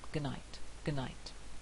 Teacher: in good night we very rarely hear the D unless it's spoken very carefully